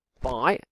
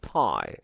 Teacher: starting with vibration by and then no vibration pie